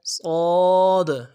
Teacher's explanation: صاد کے اندر بڑی کمی بیشی ہو رہی ہوتی ہے، صاد موٹا حرف ہے، اس کو موٹا کرنا ہے۔ عموماً اس کو موٹا کرنے کے لیے زبان کا بیچ اٹھانا ہے اور قلقلہ بھی ساتھ کرنا ہے